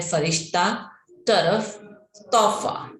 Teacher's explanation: फ इसे बोलते समय होठ नहीं मिलते हैं, खुले रह जाते हैं।